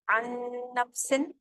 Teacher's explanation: اگلا کالم دیکھیں نون اور میم کا, عن نفس, ادغام مکمل ہو رہا ہے کیونکہ جزم والے نون کی آواز باقی نہیں رہ رہی ہے, لیکن غنہ کے ساتھ ادائیگی کریں گے